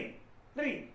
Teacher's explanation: हमारी जीभ का जो नोक भाग है वो हमारे दांतों को स्पर्श करते हुए उच्चारित हो